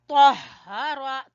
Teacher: تو کو پر پڑھیں گے اور ہا کو گلے کے آخری حصے سے نکالیں گے